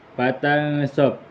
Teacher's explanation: hukumnya ikhfa hakiki dikarenakan nun sukun bertemu dengan huruf shad